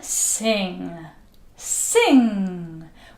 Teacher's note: Remember that air goes through the nose. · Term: ng sound